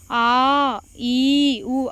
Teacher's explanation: sound வந்து நீண்டு ஒளிக்குதுல்ல இது நெடில் எழுத்துக்கள்